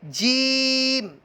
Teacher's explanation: زبان کے درمیان اور تالو کے درمیان سے یہ ادا ہوتے ہیں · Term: حروف شجریہ